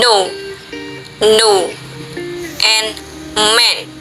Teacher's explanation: Oral passage is blocked by pressing tongue tip against the alveolar ridge, alveolar.